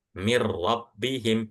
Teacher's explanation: Cara bacanya langsung masuk ke huruf setelahnya akan tetapi tanpa ghunah.